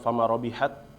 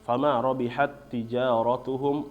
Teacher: dua huruf yang sama ya hurufnya sama makhrajnya sama sifatnya sama yaitu di huruf ta Nah jadi cara bacanya dimasukkan tanpa ditahan ya bapak-bapak jangan sampai